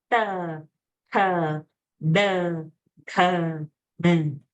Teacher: it's the hard palate where the tongue has to touch the roof of the palate.